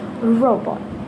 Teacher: The r sound is called the alveolar approximant, which means that you put your tongue near the roof of your mouth and voice out.